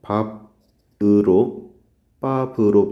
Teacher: 받침 비읍의 발음이 브로 할 때 비읍 발음 그대로 나오고 있죠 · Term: 연음 규칙